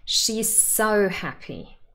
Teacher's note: you must stress so if you have the sentence just as it is on its own and you have to stress it more than happy she's so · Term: emphatic stress